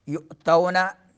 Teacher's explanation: एक ही कलमे में जो है हमज़ा आ रहा है मद के बाद मद मुत्तसिल। युअतौना हमज़े को झटका देंगे हलक के उस हिस्से से जो सीने के करीब है